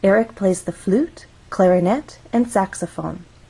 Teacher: so we're actually going to go up on flute then we'll go up again on clarinet this is our final item in the list so we're going to go down · When we have a list, we use rising intonation in each phrase until we get to the final item of the list. So, we're actually going to go up on flute, then we'll go up again on clarinet. · flute has one syllable so we only have one syllable to make our voice glide up · the flute clarinet and saxophone again when we are listing items one possible pattern is to use rising intonation in each phrase until we get to the last one